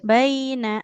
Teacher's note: nunnya nggak boleh panjang ibu. Nun fathah tidak ada alif di depannya.